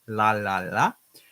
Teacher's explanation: La for the L, nice and clear in the front